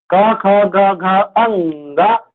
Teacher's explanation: कौन सा व्यंजन है, कंठव्य, क्योंकि इससे बोला जाता है, इसे क वर्ग को कंठ से ही बोला जाता है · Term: कंठव्य व्यंजन